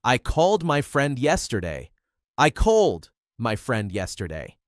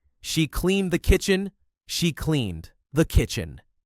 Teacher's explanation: The D at the end is soft or dropped, but your mouth still makes the shape of the D sound. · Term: softening the D sound